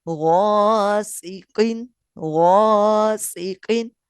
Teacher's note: غین حروف مستعلیہ میں سے ہے، موٹا پڑھا جائے گا، اس لیے الف بھی پر پڑھا جائے گا یعنی موٹا پڑھا جائے گا